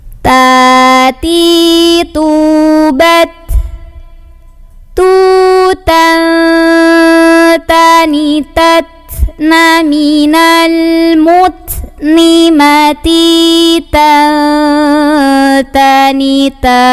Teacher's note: Nah, tanwin yang ketemu dengan ta, nanti ini kita baca samar-samar tanwinnya, nggak n lagi, tapi udah siap-siap ngucapin ta, samar sama dengung gitu. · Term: ikhfa